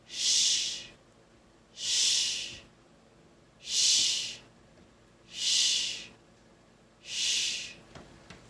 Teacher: my tongue is behind my teeth. My lips are puckered up a little bit. And I'm just blowing air out while my teeth are closed.